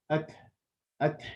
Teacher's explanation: Phase number two is right after that, the tongue is released to give a slight breath sound, like a minor spitting sound. At. So there's two steps. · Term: hums